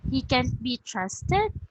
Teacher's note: repeating a statement as a question with a natural rising tone.